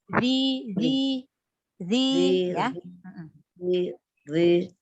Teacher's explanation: ujung lidah bertemu dengan ujung gigi seri atas, keluar sedikit.